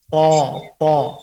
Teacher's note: Suara ke atas, itu isti'la, artinya suara ke atas, dan tebalkan itu dengan sifat itobaq.